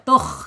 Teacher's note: Tenggorokan paling atas ya. Dia hurufnya tebal. Tukh ya tebal.